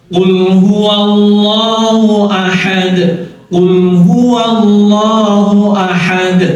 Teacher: wa tipis tapi el-nya yang tebal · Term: lam jalalahnya